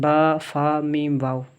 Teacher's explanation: 4 حروف ایسے ہیں جو ہونٹوں سے ادا ہوتے ہیں